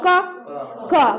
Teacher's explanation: तो कहां से आ रही है आवाज कंठ से